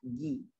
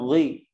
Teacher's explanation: Nah, di sini poinnya huruf gha, hati-hati. Gha kalau kasrah dia dibaca tipis ya. Dia kalau harokat fathah dibaca tebal. Memang dia adalah huruf isti'la, namun dikecualikan saat dia berharokat kasrah.